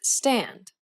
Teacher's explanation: this is the unaspirated version of the t sound as it occurs in the word stand